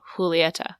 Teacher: It has a J, but the J is more of a H sound.